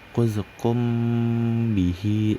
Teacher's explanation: mim dan ba ini sama-sama keluar dari kedua bibir. Jadi dibacanya itu disamarkan seolah-olah ingin ba tapi masih mim gitu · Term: ikhfa syafawi